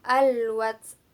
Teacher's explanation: Kemudian ada hukum bacaan al-qamariyah, yaitu al-wats, alif lam bertemu dengan waw. Jadi hukum bacanya al-qamariyah, harus dibaca jelas.